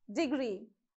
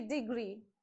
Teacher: on gree you have to put more stress